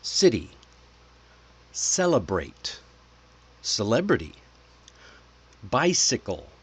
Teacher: Hear how your tongue touches just behind your teeth almost the same place as when you say the letter S. That's why we call it the soft C. · Next, the soft C. Okay, the soft C is smoother, lighter, almost like a whisper. When C is followed by E, I or Y, it usually turns the uh turns into a S sound.